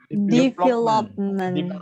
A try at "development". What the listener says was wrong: Hati-hati bunyi be. Hati-hati bunyi be. Ditekannya di situ, ditekannya di sini.